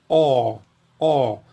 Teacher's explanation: O valor fonético dessa letra, tanto no grego antigo quanto no grego moderno, é de O, mas a diferença é que no grego antigo ele representa um som de O sempre longo e sempre aberto